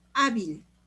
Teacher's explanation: se acentúa la a es la penúltima sílaba y como termina en l sí se le pone tilde eh